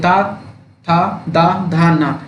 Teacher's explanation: ये सभी के सभी दंत ध्वनियां है